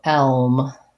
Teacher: Elm is going to have the vowel eh, like red tent, but because I'm doing L into the L, I will still hear the eh, but there's a little bit of an L, like a tiny schwa before that L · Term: dark L